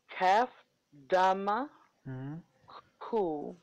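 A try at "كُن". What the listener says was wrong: No, kaf, dama, no, it is not ku here. It is kaf, dama, noon, sakin, kun. You will have to merge these two alphabets.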